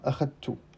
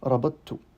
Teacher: On peut même dire que dans ce cas-là, eh bien, la prononciation de la dentale est un peu cachée. On ne la prononce pas à 100%.